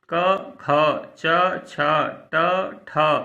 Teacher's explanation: तो इनके उच्चारण में कंपन नहीं होता। स्वरतंत्रियों में आप कहेंगे ध्वनि तो होती, ध्वनि होती है, लेकिन स्वरतंत्र में कंपन नहीं होता है।